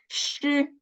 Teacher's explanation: When saying 诗, the third one, 诗, the tongue tip doesn't touch the hard palate, leaving a gap all along.